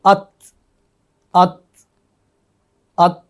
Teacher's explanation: جب تا کو ادا کرتے ہیں تو سانس پوری طرح سے آواز میں نہیں بدلتا، بلکہ کچھ اثر سانس کا رہتا ہے. زیادہ تر تو سانس آواز میں بدل جاتا ہے، لیکن کچھ اس کا اثر، کچھ حصہ سانس کا بھی ساتھ ساتھ جاری رہتا ہے، جس کی وجہ سے اس کے اندر آواز کے اندر بلندی نہیں ہوتی. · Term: ہمس